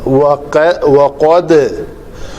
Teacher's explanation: یہاں پہ دال کے اوپر قلقلہ ہوگا اور پتلا قلقلہ ہوگا. وقد قاف موٹے حروف میں سے ہے.